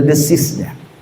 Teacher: Di azan hayya 'alal falah, apabila dibaca pa, hurufnya sama, makhrajnya sama, tapi sifatnya kena, tak berdesis